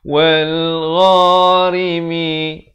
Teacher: Ghain makhrajnya di hujung kerongkong